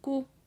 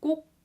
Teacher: You're not saying k already, but you're kind of ending, and you're not ending in a u, you're ending in a k kind of position of your mouth